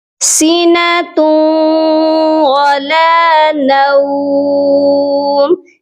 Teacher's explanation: واو مشدد کے ساتھ جب ہم اس تنوین کو ملائیں گے تو غنہ بھی کریں گے